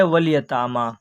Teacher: یہ تا کے اوپر کھڑا زبر ہے، کھڑا زبر برابر ہوتا ہے الف مدہ کے، اس لیے کھڑا زبر کو ایک الف کے برابر کھینچ کر پڑھیں گے، اس کو مد صلہ کہتے ہیں۔